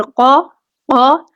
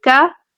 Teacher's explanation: قاف پورا اور موٹا پڑھا جائے گا، کاف جو ہے وہ باریک پڑھا جائے گا، دیکھیے گا قاف زبر قا قا، اور اگر میں کاف کی بات کروں تو کاف زبر کا قا، اور کا قا کا، ان میں فرق رکھنا جو ہے وہ ضروری ہے۔